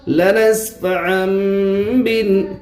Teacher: عین کے اوپر 2 زبر کی تنوین ہے، تنوین کے بعد با ہے، اس لیے تنوین کو میم سے بدل کر گنہ اور اخفا کے ساتھ پڑھیں گے، اس کو اقلاب کہتے ہیں۔